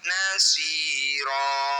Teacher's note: cara bacanya bunyi fathah tanwin kita ganti jadi fathah panjang. Nasiron ketika diberhentikan nasiro, 2 harokat saja. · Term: mad iwad